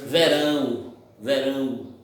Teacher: Comecei com a vogal e terminei com a semi. Comecei forte e terminei fraca. Então, não vai ser crescente, vai ser decrescente. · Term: Ditongo decrescente